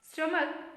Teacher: ACH. CH gets a K sound. A gets a schwa sound.